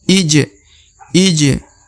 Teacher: ij'alu huruf eh a harakat i jadi dibaca i ya kemudian huruf ja berharakat sukun atau mati maka dibaca pantul